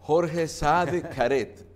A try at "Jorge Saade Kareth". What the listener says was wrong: Caret, porque ese Caret salió como británico, pero